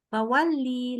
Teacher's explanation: lamnya pendek aja, satu harakat